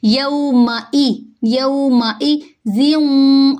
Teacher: لین ہے، میم کی حرکت لمبی نہیں ہوگی، میم باریک ہوگا، حمزہ کے نیچے جو زیر ہے اس کو ہم لمبا نہیں کریں گے اور حمزہ کو تھوڑی سختی سے پڑھیں گے